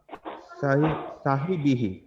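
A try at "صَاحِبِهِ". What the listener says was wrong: সাহিবি, এটা সদ হচ্ছে পোর হয়, সাহিবি। সিন জবর সা হয়, সিন জবর সা, কিন্তু সদ জবর স, সাহিবিহি। তো উচ্চারণগুলো একটু শিখে ফেলতে হবে, বিশেষ করে যেগুলো একই রকম উচ্চারণের আছে, এগুলো একটু খুব জরুরি বিষয়, যেমন সিন তারপরে সদ।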